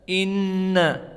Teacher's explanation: Makhrajnya berpindah dari asal makhraj torful lisan naninuan makhraj lisan, maka di sini karena musyaddadah makhrajnya pindah kepada khaisum wujubul gunnah